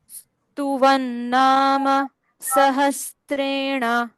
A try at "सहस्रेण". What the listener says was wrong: सहस्त्रे नहीं,